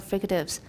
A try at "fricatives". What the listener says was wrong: Yeah, you go a little fast and it sounds a little too voiced or something. Fricatives.